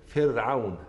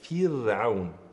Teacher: أكسر جيدا الفاء كي ينتج عنه ترقيق الراء كذلك جيدا